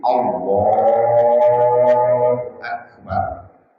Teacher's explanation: lafaz Allahnya itu harus lafaz Allah juga harus tafkhim. Allah tebel, jangan tarkik.